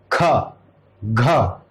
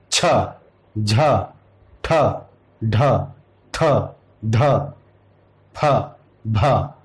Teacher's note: इसमें वायु अधिक प्रयोग की जा रही है, तो इसलिए महाप्राण है।